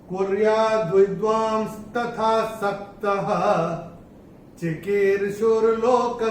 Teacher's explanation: अब तीसरे चरण की समाप्ति पे श आधा आ रहा है, और चरण की समाप्ति पे जब श या स आधा आता है तो उसका उच्चारण विसर्ग होता है